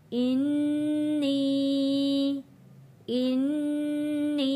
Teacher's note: नून तशदीद पे यहाँ पे गुन्ना अदा होगा